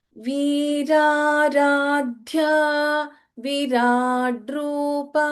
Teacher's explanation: The first letter V is Dirgha. In the second word, the first letter V here is Hrasva